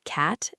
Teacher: requires you to open your jaw quite wide and spread your lips sideways, almost like a flat smile, while keeping your tongue very low and flat in your mouth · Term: flat, wide a